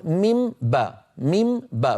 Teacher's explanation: الأصل أن أقول ميم باء، ميم باء، فأطبق الشفتين مرتين، مرة للميم ومرة للباء. الآن أنا أطبق على ميم وأجافي عن باء، ميم باء.